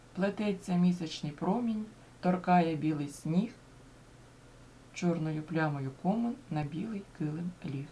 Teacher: наприкінці першої частини тон підвищується і наприкінці останньої частини він знижується